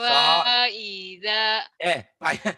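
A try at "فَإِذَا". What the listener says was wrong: jangan mentang-mentang lagu panjang. Faida, jangan. Faida. Faida ya.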